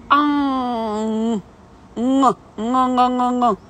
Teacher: ви кажете А, тільки не просто співаєте А, да? А трошки співаєте в нос, да? Тобто вверх піднімаєте в нос. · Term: носовий звук